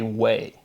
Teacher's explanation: you can hear phonetically the pronunciation going from we to way, and it's that E to A.